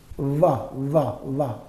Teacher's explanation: Articulated with the lower lip touching the upper teeth. Lower lip is touching the upper teeth. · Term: labiodental